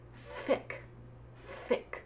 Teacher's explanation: you pronounce thick by putting your upper teeth on your tongue